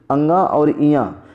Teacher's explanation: अंगा और इया ये दोनों 5वें अक्षर हैं और 5वें में आपको पता है कि नाक और मुंह का संबंध होता है।